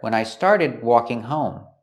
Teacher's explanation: the D in started is a stop D. We don't say when I started, we stop the air.